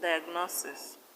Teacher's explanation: In diagnosis, the stress is on NO.